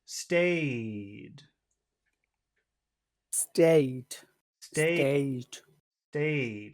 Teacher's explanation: because of this D, this vowel sound is very, very long. So let's, even though it's not an important word, let's highlight it like it's important to remind ourselves that it must be pronounced in a very long way.